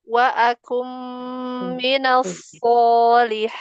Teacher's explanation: Wa akum huruf kaf, jangan seperti qaf.